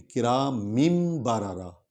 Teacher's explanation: کرامم بارارا، اصل میں تھا کرامن بارارا، لیکن چونکہ تنوین کے بعد والا جو حرف ہے وہ با ہے تو یہ کلیہ ہے، ہم اس تنوین کو میم میں بدل دیں گے، یعنی ایک زیر کھڑی ہوگی اور ایک کی جگہ ہم میم پڑھیں گے، کرامم بارارا، ٹھیک ہے۔ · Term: قاعدہ اقلاب